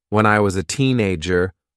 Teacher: the consonant sound Z joins to the vowel sound uh so the two words sound like one